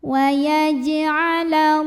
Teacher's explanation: Lalu alif lamnya namanya alif lam syamsiyah karena alif lam bertemu huruf syamsiyah yaitu lam. Maka alif lam ini tidak perlu dibaca, dilewat aja langsung ke lam berikutnya